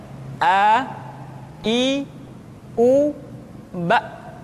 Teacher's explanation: Makhraj ketika mengucapkan huruf A berada pada tenggorokan yang terjauh